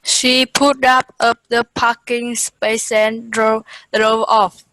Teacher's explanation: got all those final sounds linked together